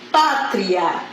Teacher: sol forte para o som fraco o exemplo de baixo pátria eu tenho uma semivogal tá e vou para a vogal então eu vou chamar de som ou de ditongo tá no